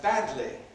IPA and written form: ˈbædli (badly)